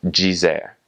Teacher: in Brazilian Portuguese, when you have a DI or a DE at the end of a word, that will make a J sound